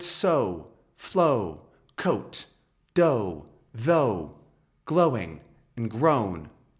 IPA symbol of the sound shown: oʊ